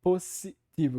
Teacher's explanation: essa marca do espanhol que é a língua materna dele que não tem essa sibilante sonora é tudo surdo sempre